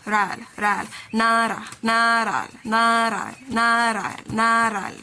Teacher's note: Like you have an L sound at the ending of the R.